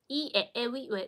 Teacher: these vowels, they are made into the frontal area of your mouth